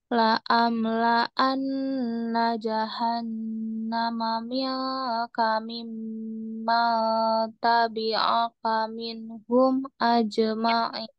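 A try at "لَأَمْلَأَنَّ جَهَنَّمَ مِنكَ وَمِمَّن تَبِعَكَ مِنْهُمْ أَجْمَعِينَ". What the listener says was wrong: Wa-nya ketinggalan. Wa mimman tabi'aka minhum ajma'in. Wa-nya tadi ketinggalan. Coba ulang.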